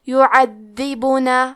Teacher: حرف الدال پہ تشدید ہے تو ہم 2 حرف کے برابر دال کو پڑھیں گے۔ حرف البا پہ پیش ہے تو ہم پیش کو ظاہر کریں گے، یعذبون۔